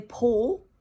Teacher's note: It sounds like paw, P-A-W. The L is completely swallowed in the back of the mouth. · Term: dark L